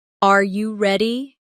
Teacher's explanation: For example, when a native speaker asks a yes or no question like, "Are you ready?" The pitch of their voice goes up at the end.